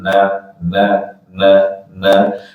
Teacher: membaca panjangnya na itu sama dengan mengucapkan na empat kali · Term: empat harakat